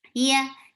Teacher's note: You are lifting your tongue up, but you are not touching it with your palate. Yeah, it's very soft letter.